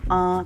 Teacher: il y a des sons qui vont résonner plus dans la cavité nasale, dans le nez. Ils vont sortir par le nez. Ça va faire des sons comme an, comme in, comme on.